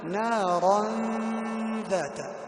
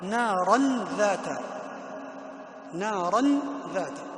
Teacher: لاحظ الفرق بين الإخفاء بغنة نارا ذات وبين الإظهار نارا ذات